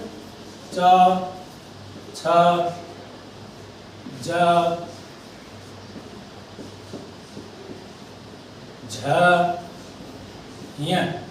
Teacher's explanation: येषां वर्णानां उच्चारण स्थानं तालु अस्ति। अस्मात् कारणात् येषां वर्णानां तालव्य इति संज्ञा भवति।